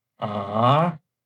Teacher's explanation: the second tone is from level 3 up to level 5, and the symbol is from left up to right, and it sounds ah.